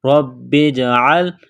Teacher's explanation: با کو جیم کے ساتھ پلس کریں گے، جیم پر قلقلہ کریں گے